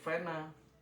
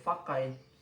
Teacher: semua pengucapan yang seharusnya berbunyi P menjadi bunyi F. Semuanya.